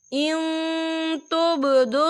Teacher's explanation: ان تبدوا الصدقات، یہاں دیکھیں ان، یہاں نون ساکن ہے اور نون ساکن کے بعد جو ہے تا آ رہا ہے، اور تا جو ہے اکفا کا ورڈ ہے تو ہم یہاں اکفا کریں گے، نون ساکن کی آواز کو ناک میں چھپائیں گے